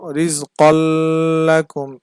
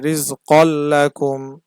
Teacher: ইদগামে বেলাগুন্নার ক্ষেত্রে আমরা গুন্না ছাড়া মিলিয়ে পড়বো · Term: ইদগামে বেলাগুন্নাহ